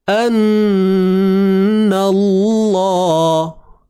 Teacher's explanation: Kalimah Allah kena tebal sebab sebelumnya ada huruf baris atas.